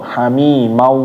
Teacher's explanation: kalau tanwin atau nun mati itu harus ditahan ketemu waw. Jangan langsung pindah ya. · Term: idgham